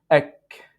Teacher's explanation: So in Arabic, it will be ak and then k. You do this continuation of breath, which is al-hams.